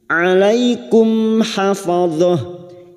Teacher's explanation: mim sukun bertemu ha, mim sukun dibaca jelas tanpa mendengung, idhar syafawi.